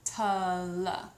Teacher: the T sound at the beginning is a stronger sound, and that helps to bring emphasis to that downbeat. The ul sound is a softer sound, and so it helps to minimize that beat.